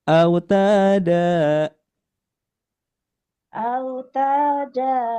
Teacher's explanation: Jadi untuk irama di ta dan da ini datar saja.